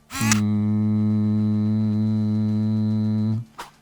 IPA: n